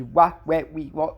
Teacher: É um som aproximante, lábio-velar sonoro. Lábio-velar, que usa os lábios para fazer o wa, mas que ao mesmo tempo a língua está perto da região do g e do k. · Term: semivogal